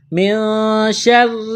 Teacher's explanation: نون ساکن کے بعد شین ہے، حروف اخفا ہے، غنہ کریں گے، آواز ناک میں چھپائیں گے